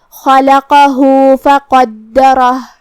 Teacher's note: را کا حکم ہے تفخیم، ہمیں را کو بھاری آواز میں پڑھنا ہے · کلمت فقدرہ میں یہاں قاف کا دھیان رہے، ہمیں اسے بھاری آواز میں پڑھنا ہے. دال پہ تشدید ہے، تو 2 حرف کے برابر ہم حرف دال کو پڑھیں گے.